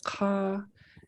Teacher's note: it's a long high A